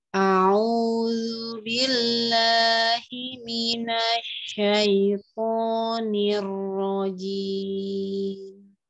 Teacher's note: Huruf ainya ditekan lidah tenggorokan tengahnya. Kemudian di a'udzu billahi lamnya diluaskan ya. Luas makhrajnya tipis.